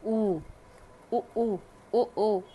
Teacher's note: ऐसे स्वर जिनका उच्चारण करने से ओठों का आकार गोल हो जाता है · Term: वृत्तमुखी